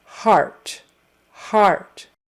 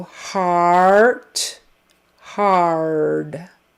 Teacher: And the AR sound is, you're going to start with the ah vowel. Ah, which is kind of a short O sound, ah, and then your tongue moves back and up for the R. R, R. So heart, hard. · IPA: /ɑr/